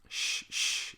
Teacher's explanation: This just means that it is post-alveolar, meaning that the top of your tongue is right behind the alveolar ridge, but the back of your tongue is raised a little bit, and so not the back, the middle. The middle of your tongue is sort of touching your soft palate a little bit. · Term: post-alveolar sound